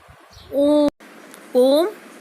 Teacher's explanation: इसमें उच्चारण में ह्रस्व और दीर्घ स्वरों की उच्चारण से तिगुना समय लगता है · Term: प्लुत स्वर